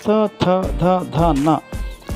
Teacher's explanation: ಈ ತ ವರ್ಗದ ಅಕ್ಷರಗಳು ಹಲ್ಲುಗಳ ಬಳಿ ಹುಟ್ಟುವುದರಿಂದ ಇವನ್ನು ದಂತೆ ಅಕ್ಷರಗಳು ಎಂದು.